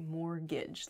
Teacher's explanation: mortgage has a t in it but we don't say the t it sounds like mortgage like there's no t at all